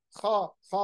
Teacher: खा को पढ़ते वक्त खराश मोटा पढ़ा जाता है